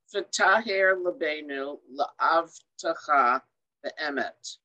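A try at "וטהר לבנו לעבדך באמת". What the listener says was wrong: Exactly.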